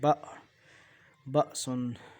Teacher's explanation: اور جو حمزہ ہے جھٹکے کے ساتھ پڑھا جاتا ہے